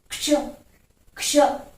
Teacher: तो पहले क की ध्वनि आ रही है, फिर श की ध्वनि आ रही है